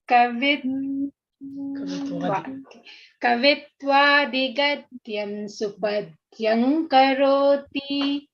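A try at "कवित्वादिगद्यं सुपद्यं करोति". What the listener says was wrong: Yeah, Gadyam you have to pronounce. You cannot swallow that. Only when there is, because the Sakara doesn't have any, there is no Parasavarna for the nasal there. There is only Parasavarna here.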